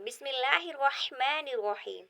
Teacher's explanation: رحمان کی جو را ہے اس کے اوپر زبر ہے تو یہ پر پڑھی جائے گی یعنی موٹی آواز میں ادا ہوگی